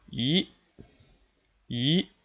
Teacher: The second tone is from 3 to 5, starting in the middle, rising all the way up steadily.